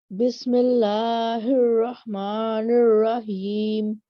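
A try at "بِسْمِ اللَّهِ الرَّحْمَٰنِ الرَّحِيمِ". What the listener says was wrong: Very nice.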